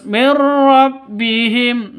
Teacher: nun mati bertemu dengan ro cara bacanya masuk ke ro tanpa dengung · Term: idgham Bila Ghunnah